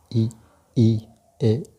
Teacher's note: अग्रभाग, इसके उच्चारण में वायु जिह्वा के अग्रभाग को प्रभावित करती है, अर्थात आप ई, ए, ऐ का उच्चारण करके देखेंगे तो इसमें आपको महसूस होगा कि आपकी जिह्वा का अग्रभाग कार्य कर रहा है